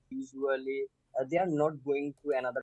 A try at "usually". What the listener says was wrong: Again, that usually with many of the Bangladeshi candidates, again, there are some problems with this j sound. J. Usually, j.